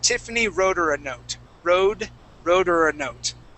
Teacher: so we drop that H and we don't say her.